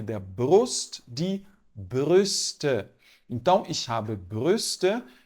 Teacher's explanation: ele é um intermediário entre o u e o i você vai fazer a boca do u e vai falar fazer o som do I Então tem que fazer o biquinho mesmo então aqui BR de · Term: u com trema